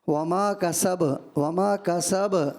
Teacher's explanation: کسب با جب ساکن ہوگا تو ساکن کلکلا ہوگا